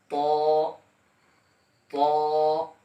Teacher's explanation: জিহ্বার আগা যেটা, এটা সামনের উপরের দুই দাঁতের গোড়ার সঙ্গে লাগবে , অর্থাৎ গোড়ার দিকে লাগাবেন এবং জিহ্বাটাকে একটু মোটা করার চেষ্টা